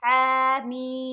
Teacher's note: حلق سے نکالیں گے اور ہاں پر کھڑی زبر ہے، اسے صرف اور صرف ایک علی کے برابر کھینچیں گے، حمیم۔ ہا صرف تھوڑا سا کھینچیں گے کھڑی زبر کی وجہ سے، میم کو 5 علی کے برابر کھینچیں گے۔